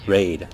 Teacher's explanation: the length of the second part of the word raid was a little longer because of probably the fact that raid was a diphthong